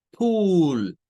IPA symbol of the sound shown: uː